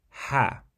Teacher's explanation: ha is basically like the English H that we pronounce however it comes more from the throat